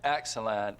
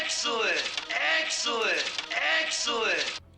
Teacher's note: when they say excellent, that's a lower dress vowel